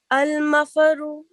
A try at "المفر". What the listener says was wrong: مفارو نہیں، را پر تشدید ہے نا، فا کے ساتھ ہٹ کرو را کو. مفر. المفر. مفر فر تھوڑا سا دبا کے.